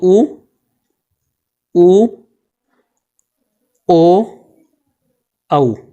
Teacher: हमारे ओठों की आकृति जो है जब वो गोलाकार हो जाए तो वो व्रतमुखी स्वर कहलाते हैं।